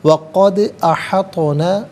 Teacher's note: دال ساکن ہے لیکن حرف قلقلہ ہے تو آواز لوٹتی بھی محسوس ہونی چاہیے